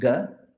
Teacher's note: If you do a soft unaspirated coming from the throat, it's ga.